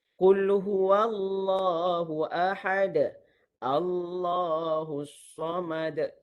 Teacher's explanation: jangan tebalkan pada huruf waw, jangan tebalkan pada huruf hamzah wasal itu